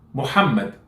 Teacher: be careful, it's not H, it's ha, it's sharper.